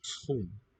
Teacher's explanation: OE is an U sound, single vowel sound.